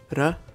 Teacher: r in both languages is pronounced either as a tap ra or an alveolar trill